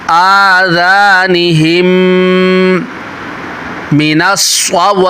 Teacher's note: ہم میں میم ساکن کے بعد دوسری میم آ رہی ہے، میم ساکن کے بعد دوسری میم آ جائے وہاں پر ادغام شفوی ہوتا ہے، غنہ کر کے پڑھیں گے